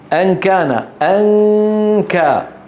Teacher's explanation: لاحظوا في القاف والكاف ليس هناك شيء من الفم